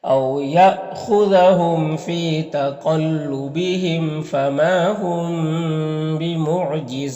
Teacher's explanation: قاف حروف مستعلیہ میں سے ہے، میم میں اظہار شفوی ہو رہا، ما میں الف مدہ ہے۔ یہاں پر میم ساکن کے بعد با ہے تو یہاں پر اخفاء شفوی ہوگا، غنہ اور اخفاء کے ساتھ میں اس کو پڑھتے ہیں · او میں واولین ہے، یہاں پر حمزہ ساکنہ جھٹکا لگے گا